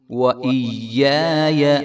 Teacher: یا کو ایک الف کے برابر لمبا کریں گے